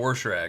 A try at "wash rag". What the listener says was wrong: there's no R in that word.